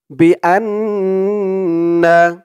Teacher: এখানে ওয়াজিব গুন্না হবে হরকতের পরে নুনের উপরে তাসদিদ